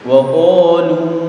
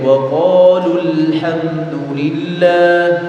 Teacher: Wa qalu harusnya dibaca panjang 2 harakat. Tetapi ketika bertemu dengan alif lam atau al, maka lu-nya dibaca pendek.